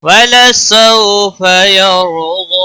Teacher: واو لین ہے، تھوڑا نرمی کے ساتھ کھینچ کر پڑھیں گے، ہا کو کھینچنا نہیں.